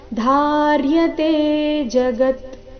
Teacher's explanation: ಧಾರ್ಯತೆ ಧಾ ಮಹಾಪ್ರಾಣ ದೀರ್ಘ